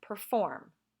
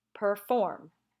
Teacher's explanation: so in these words the stress is on the second syllable